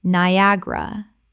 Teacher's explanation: Three syllables in natural speech with the stress on the second.